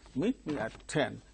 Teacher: me and at are not stressed